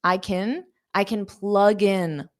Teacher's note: can here is the auxiliary verb. It's not the main verb. So it's an unstressed kin.